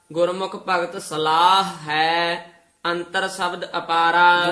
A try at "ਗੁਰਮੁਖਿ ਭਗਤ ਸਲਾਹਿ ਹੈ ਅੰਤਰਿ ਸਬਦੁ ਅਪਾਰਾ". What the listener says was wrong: ਦੋਵੇਂ ਹਾਹੇ ਬੋਲਨੇ ਹਨ।